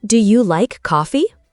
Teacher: My voice rises at the end. That's rising inonation. It tells you I'm asking something. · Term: rising intonation